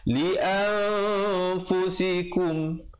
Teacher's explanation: Kemudian terus ibtidak pada waqaddimu, dal itu bersabdu, waqaddimu li'an, ikhfa di situ 2 harakat, asalnya li'an, tapi bila datang fa, li'anfusikum.